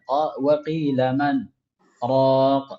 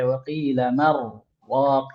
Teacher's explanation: Nah, ketika kita saktahkan di situ, maka nun mati yang seharusnya ketika bertemu dengan ra itu hukumnya idgham, maka tidak ada idgham, diizharkan.